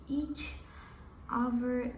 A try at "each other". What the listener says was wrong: Не, смотри, вот это, скажи other. Вот у тебя нет the. The.